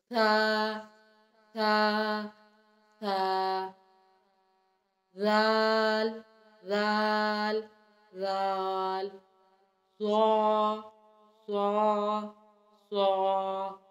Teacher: सा, जाल, ज़ा अदा करते हुए हमारी ज़ुबान की नोक सामने के दोनों दांतों के दरमियान में या पीछे लगेगी।